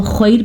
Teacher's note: وقف کی وجہ سے خیر را کو ساکن کر دیا, لیکن را کو ہم نے پر پڑھا